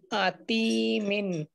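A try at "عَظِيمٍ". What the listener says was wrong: আতি তি আছে নাকি? এটা তো জ, উপরে নক্তা আছে। আজি হ্যাঁ আজি।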